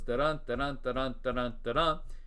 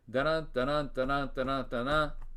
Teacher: Feminine ending, a regular line of iambic pentameter that has an extra unstressed syllable at the end of the line. So regular line goes da-dun, da-dun, da-dun, da-dun, da-dun.